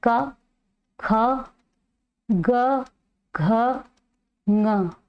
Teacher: क वर्ग जो है वह कंठ ध्वनि है। क वर्ग में आता है क ख ग घ ये क वर्ग है। कंठ से बोला जाता है।